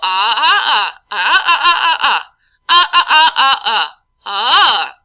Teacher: that's just changing my pitch of my voice and resonating that sound through my oral and nasal cavities